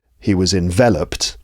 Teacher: Envelop, that's 3 syllables, stress on the second syllable. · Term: word stress